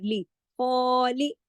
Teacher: लाम को नहीं खींचना, लाम एक हरकत के साथ है